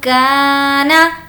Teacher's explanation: کا کو کھینچیں گے کیونکہ الف مدہ ہے